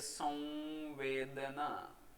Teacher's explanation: આ ઉચ્ચારતી વખતે વ અડધો ઉચ્ચારીએ છીએ